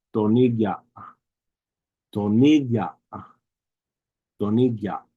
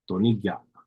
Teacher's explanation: There's a little bit of a Y sound that comes after the G.